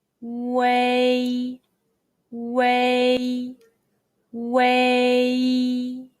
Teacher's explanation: sound of the english word way but shorter and tensed say your lips are from round to spread